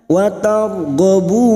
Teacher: Bertemunya mad dengan huruf hidup, karena kita memilih wakaf di sini maka bunyinya wa targhabun. 4 harokat kita panjangkan mad arid li sukun